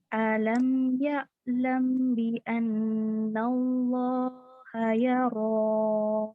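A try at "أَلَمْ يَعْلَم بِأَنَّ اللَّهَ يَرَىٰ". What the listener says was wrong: Kurang dengung sedikit mim ketemu baknya.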